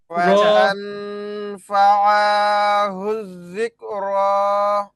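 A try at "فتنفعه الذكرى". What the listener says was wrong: ফাতাং ফা, আটা কয় টান? আপনি তো 5 আলিফ টানছেন কমপক্ষে।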